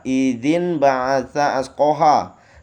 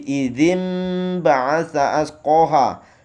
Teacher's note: nunnya berubah menjadi mim nun mati bertem dengan ba dibaca mim jadi idim baasa asqoha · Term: ikqlab